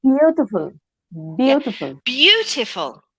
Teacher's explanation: first syllable is stressed